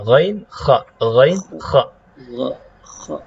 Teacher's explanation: Jadi dua huruf ini kalau kita rasakan itu sebenarnya lidah belakang kita tuh bertemu dengan bertemu dengan langit-langit